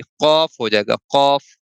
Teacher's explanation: قاف کی ادائیگی کے لیے زبان کی جو جڑ ہے نا یہ پیچھے کوے سے متصل جب تالو سے لگتی ہے تو قاف کی ادائیگی ہوتی ہے